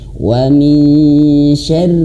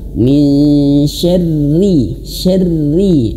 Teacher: Kesalahan yang ketiga ketika kita baca Quran surah Al-Falaq yaitu rnya menjadi tebal. Harusnya roya tipis.